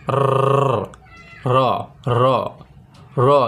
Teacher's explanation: বাংলায় কম্পনজাত ধ্বনি মাত্র একটি, সেটা হচ্ছে র। দেখুন র উচ্চারণের সময় কিন্তু জিহ্বাটা কেঁপে ওঠে, র র র। একমাত্র বাংলা ব্যঞ্জনের ক্ষেত্রে এই একটি বর্ণই উচ্চারণের সময় আপনার জিহ্বাটা কাঁপবে, র।